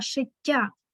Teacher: дві літери т в нас позначають подовжений звук але бачимо що в нас я пом'якшаує попередні